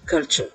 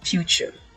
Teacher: c'est comme si vous aviez ch, comme dans cheese, chair, suivi du son schwa, le e, et ce qui donne ch.